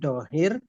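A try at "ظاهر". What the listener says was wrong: Oke, dohir itu nanti dibacanya pakai zo ya. Isim zohir, zo. pesawat. Po, zo, isim zohir.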